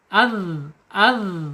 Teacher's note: Jadi arkhawah ya, dia mengalir ketika sukun.